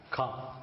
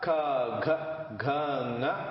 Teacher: the most part of the tongue touches the innermost palate